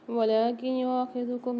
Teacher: نون ساکن کے بعد یا مشدد آ رہی ہے، یہاں غنہ کر کے پڑھیں گے۔